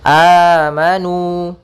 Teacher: adanya huruf mad datang setelah huruf hamzah maka panjangnya adalah dua harakat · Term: mad badal